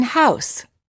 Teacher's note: the lips are not rounded but as you move toward the second part the oo the lips begin to close and become more tense the tongue moves from a relaxed low position to a high · the tongue moves from a relaxed low position to a high position the common spelling patterns for this sound include o u as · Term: ow sound